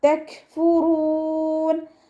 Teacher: വാവിനെ ചുണ്ടുകൾ വട്ടത്തിൽ പിടിച്ചിട്ട് ഉച്ചരിക്കാൻ ശ്രദ്ധിക്കുക. കാഫ് സുക്കൂനാവുന്ന സമയത്ത് എയർ പാസ് ചെയ്യണ സൗണ്ട് കൊടുത്തിട്ട് ഉച്ചരിക്കുക